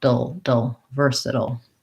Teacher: I go right from the flap T into the L